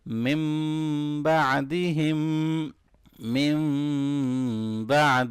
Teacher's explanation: یہاں پر ہم مم پڑھیں گے، من نہیں پڑھیں گے کیونکہ نون ساکن کے بعد با آ رہا ہے ، یہاں اقلاب ہوگا، ٹھیک ہے۔ من بعدہم، من بعد، یہاں